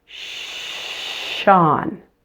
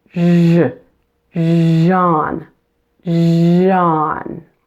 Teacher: Now turn on your voice as you're pronouncing the sh. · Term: j sound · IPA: /ʒ/